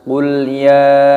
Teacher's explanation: Di sini dibaca mad jaiz munfasil, dipanjangkan 5 ketukan.